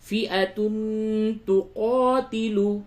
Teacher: فئۃ تقاتل. تنوین کے بعد تا ہے، اخفا کیجئے